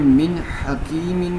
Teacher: یہاں پہ من حکیم میں بھی ہم غنہ نہیں کریں گے، کیونکہ نون ساکن کے بعد ہا جو ہے یہ حروف حلقیہ میں سے ہے، اور نون ساکن کے بعد اگر حروف حلقیہ میں سے کوئی حرف آ جائے تو وہاں پر اظہار ہوتا ہے، اور اظہار جہاں پہ ہو وہاں پہ غنہ نہیں کرتے۔